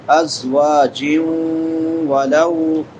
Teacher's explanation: تنوین کے بعد حروف یرملون میں سے واو ہے تو ادغام مع الغنہ ہوگا